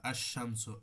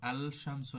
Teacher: আশ-শামসু, আল শামসু না পড়ে, স্পষ্ট না পড়ে আশ-শামসু লামকে বিলুপ্ত করে দিয়ে আগের হরফের সাথে ইদগাম করে পড়া হচ্ছে, এইটা হচ্ছে ইদগাম।